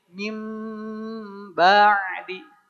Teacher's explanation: Awalnya bunyi N dirubah jadi bunyi M. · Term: iqlab